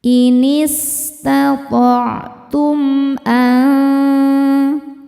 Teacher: Berikutnya ada hukum izhar syafawi. Karena mim sukun tidak menghadapi mim atau ba. Di sini menghadapi hamzah. Cara bacanya mim dibaca jelas. · Sinnya berdesis ya. Salah satu sifat dari sin yang tidak memiliki lawan yaitu sofir, ada desisan.